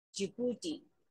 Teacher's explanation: The stress is on the second syllable